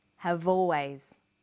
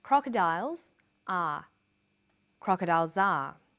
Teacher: in conversation we link the final consonant sound v with the initial vowel sound